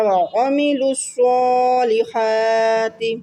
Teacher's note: لام کو سواد سے ملایا، سواد پہ کھڑی زبر ہے تو ایک الف کی مقدار کھینچ کر پڑھا